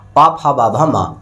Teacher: अब ओष्ठ व्यंजन के अंतर्गत क्या आता है, पा फा बा भा मा। जैसे पा फा बा मा का उच्चारण हम करते हैं तो हमारे दोनों ओंठ आपस में टच होते हैं।